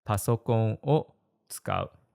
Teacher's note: I've been saying wo, but it's actually pronounced o in most modern Japanese. The W is silent. But some people still say wo, and it's not a big deal.